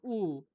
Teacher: উ উচ্চতে আছে, পশ্চাদে আছে এবং সংবৃত হয়ে আছে।